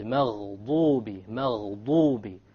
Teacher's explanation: the dad, remember, it comes from one entire edge of the tongue along with the molars